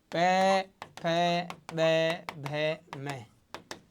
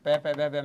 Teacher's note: इनका उच्चारण स्थान है ओष्ठ, इसलिए इनको मित्रों कहते हैं ओष्ठ्य वर्ण।